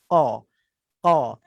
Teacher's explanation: Kemudian qaf kan kita dah belajar. Qaf tu bahagian dekat dengan pangkal lidah tu dia akan sentuh dengan langit atas